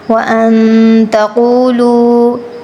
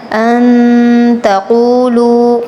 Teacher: نون پر غنہ کرنا ہے۔ ان تقولوا، قاف پر تفخیم کرنی ہے۔